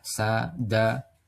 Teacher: Yakni berdekatan makhraj maupun sifatnya. Misal huruf dal bertemu dengan huruf sin. Maka keduanya dekat ya di ujung lidah. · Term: idgham mutaqorban